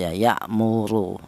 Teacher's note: untuk menebalkan huruf ra yang dibaca tahfim ini menggunakan lidah bagian belakang diangkat ke atas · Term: dibaca tebal